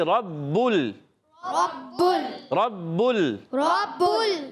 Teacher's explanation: با مشدد ہے، ذرا رک کر ادا کریں گے. اور با پر بھی پیش کی حرکت ہے، کھینچنا نہیں ہے. · با کو لام سے ملا دیں گے، لام ساکن ہے تو ہلانا نہیں ہے · را کو با سے ملائیں گے، را پر زبر ہے، حرکتیں نہیں کھینچیں گے. با مشدد ہے، ذرا رک کر ادا کریں گے.